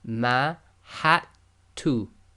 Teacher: The dal is sakin, so in this case we're going to totally ignore the dal